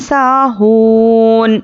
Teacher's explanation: हामिम ज़ेर हिम, स्वला आती हिम, साहून, सीन अलिफ ज़बर सा, तो ये क्या है अलिफ मद्दा है, सीन अलिफ ज़बर, तो यहाँ पर क्या करेंगे एक अलिफ के बराबर खींच कर पढ़ेंगे। वाव पर जज़म और उसके पहले पेश वाव मद्दा, इसको भी एक अलिफ के बराबर खींच कर पढ़ेंगे। अब यहाँ पर नून पर ज़बर है तो आखिरी हर्फ पर हम जज़म देकर सांस तोड़ेंगे।